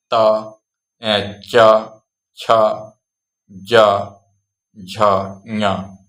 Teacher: च वर्ग तालु से सीधे जुबान के ऊपर वाले हिस्से से